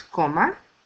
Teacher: Coma ends in a vowel, so the stress is in the next to the last syllable, co. La sopa will get substituted by la.